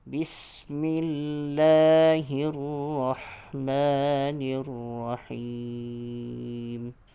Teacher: ra baris atas perlu ditebalkan ataupun di takhim · bila kita menutup bibir suara kita akan tertolak ke rongga hidung yang menyebabkan zahirnya sifat gunnah yang asli pada huruf mim